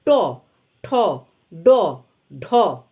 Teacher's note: জীবের ডগা তালুর অগ্রভাগ স্পর্শ করে ওই জায়গাটিকে বলে মূর্ধা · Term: মূর্ধন্য বর্ণ